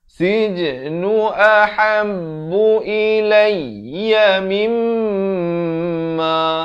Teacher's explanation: Sij ada pantulannya qalqalah sughra.